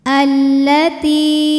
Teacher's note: Lam yang sukun tidak dibaca, langsung masukkan ke lam kedua sehingga disebut dengan idgham syamsi.